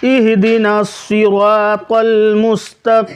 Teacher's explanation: سواد کو جب آپ پڑھیں گے تو منہ آپ کا گول ہو جائے گا